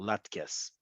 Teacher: Emphasis on the last syllable, latkes.